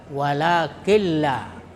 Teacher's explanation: mengidghamkan nun atau tanwin pada lam tetapi tanpa mendengung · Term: idgham bila gunnah